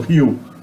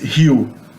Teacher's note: the letter O at the end of a word is pronounced like a U, usually if it's unstressed